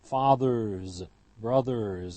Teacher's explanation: The retroflex in English is voiced, and so it's followed by a voiced ending